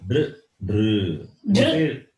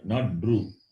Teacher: When you say dr, dr, you don't see the rounding of the lips. The lips are flat only. Okay. The tongue touches the cerebrum, the roof of the mouth.